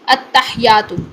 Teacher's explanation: ہا کو ساکن کر دیتے ہیں اور یا کی تشدید ختم کر دیتے ہیں. غلط ہے یہ ادائیگی.